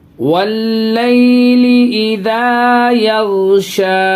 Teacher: یہ غین پہ آواز ہلے گی نہیں، قلقلہ نہیں کریں گے، بالکل بھی آواز ہلے گی نہیں